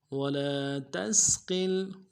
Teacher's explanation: ارض، تثير الأرض ولا تسقل، ولا تسقل، واو کو نرم سے ادا کرنا ہے، لام کے ساتھ الف مدہ ہے، ایک الف دال میں کھینچیں گے، تا کو سین کے ساتھ ملانا ہے، سین کی سیدھی باریک ہوگی، قاف کو لام کے ساتھ ملائیں گے، قاف کو موٹا کریں گے